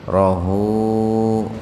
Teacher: Rohu madsilah qasira. Jadi hu-nya baca panjang dua ketukan.